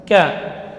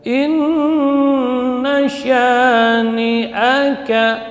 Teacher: Ka ya, tetap mengalir udara namun suaranya tertahan, maka tidak boleh berlebihan hamasnya di huruf kaf karena dia syiddah.